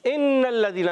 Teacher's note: ان الذین, نون مشدد, نون مشدد ہے, ہمیشہ ایک الف کا غنہ ہوتا ہے. ان الذین, لام بھی مشدد ہے, نون بھی مشدد ہے, دونوں کو ذرا رک کر پڑھنا ہے.